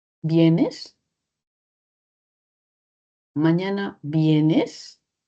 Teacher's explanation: Y hay esa curva melódica ascendente, donde una respuesta esperada es afirmativa o negativa.